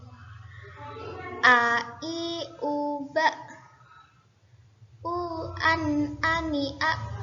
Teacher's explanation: Huruf hamzah memiliki sifat syiddah atau suara kuat tertahan dan jahar jelas dan nafas tertahan. Nafas tidak keluar dari mulut. · Nafas tidak keluar dari mulut. Jadi mengucapkan huruf hamzah itu nafasnya tidak keluar.